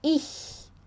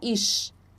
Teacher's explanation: Então, para produzir este som, precisa-se colocar a ponta da língua nos dentes inferiores e pronunciar o som do CH no português